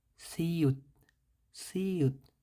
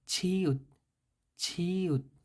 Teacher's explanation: এটা হবে হালকা করে সিউত, সিউত, আর এটা হবে একটু ভারী, একটু আওয়াজটা একটু মোটা বা বোল্ড বা ডাবানো,